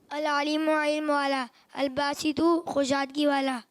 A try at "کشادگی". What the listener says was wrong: خوشادگی نہیں، کشادگی۔